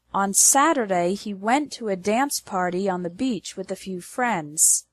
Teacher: The stress is on the words Saturday, went, dance, party, beach, and friends. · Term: strong words